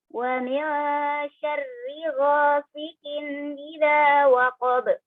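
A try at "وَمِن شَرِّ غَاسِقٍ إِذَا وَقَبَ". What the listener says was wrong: itu qaf ghasiqin.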